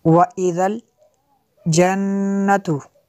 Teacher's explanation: नून में शद्दद है, गुन्ना करेंगे। नून में शद्दद पे गुन्ना होता है।